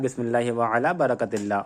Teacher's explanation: برکت اللہ میں را کے چکر میں کاف کو پر نہیں کرنا ہے ورنہ وہ غلط ہو جائے گا.